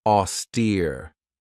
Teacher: This has 2 syllables, and the stress is on that second syllable with that long E sound, austere. If somebody or something is austere, it means that they're very severe in their manner, they're very strict, or even without excess.